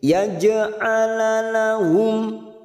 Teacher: Jim sukun karena mati di tengah kalimat kita pantulkan. Jim sukun mati asli di tengah-tengah kalimat namanya bacaan qalqalah sugro.